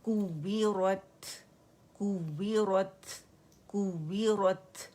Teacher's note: را موٹی ہوگی اور تا پہ ہم نے ہمس کرنا ہے. سٹاپ کر رہے ہیں ہم.